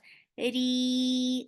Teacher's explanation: ra is light, and this is 2 counts long vowel. Make it long.